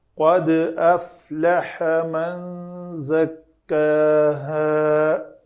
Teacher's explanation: دال ساکن ہے تو اس کو کلکلہ کریں گے اور کلکلہ پتلا ہوگا۔ قاف تا با جیم دال میں قاف اور طا جو ہیں وہ پر ہیں تو ان پہ اوپر کلکلہ پر ہوتا ہے، اور دوسرے پتلے ہیں تو وہ پتلا ہوگا، مرقق ہوگا۔